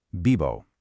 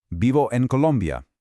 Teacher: When pronouncing a word like vivo, that V nestled between the vowels doesn't have a harsh, buzzing English V sound. Instead, it sounds like a soft, smooth mix of a B and a V. It's a very relaxed, flowing phonetic sound. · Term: soft B/V mix